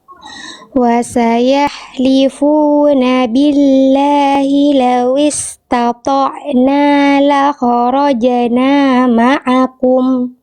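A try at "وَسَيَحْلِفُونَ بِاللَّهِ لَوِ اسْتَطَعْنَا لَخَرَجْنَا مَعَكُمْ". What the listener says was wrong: Oke, bagus.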